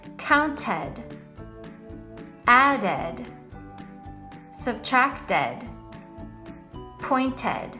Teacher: the ed ending can make the sound of a short e plus a d, literally ed.